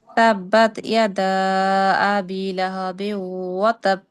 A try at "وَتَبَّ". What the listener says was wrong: বা তাব কলকলা হবে জজম। বা তাব তাব কলকলা। বা তাব যদি আমরা বলি তাহলে সেটা কলকলা হয় না, জজম হয়ে যায়। কলকলা মানে হচ্ছে দুইবার পড়তে হবে আমাদের।